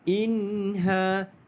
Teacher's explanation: Izhar halqi ini tidak ada dengung pada bacaan dia, iaitu yang ada adalah bacaan jelas tanpa dengung.